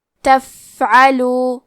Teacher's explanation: عین کی ادائیگی حلق کے درمیان والی حصے سے ہے